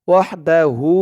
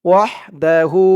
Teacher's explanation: উল্টা পেশ হওয়ার কারণে এক আলিফ টান হবে